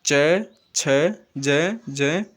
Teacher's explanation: तालु से इनका उच्चारण होने के कारण इन्हें तालव्य वर्ण कहते हैं